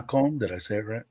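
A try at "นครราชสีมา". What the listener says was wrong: I thought it was an N on the end of that. Nakhon.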